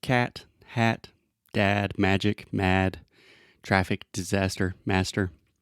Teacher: this is a very open and front sound so you want to open your mouth a lot and then just imagine that you were kind of pushing everything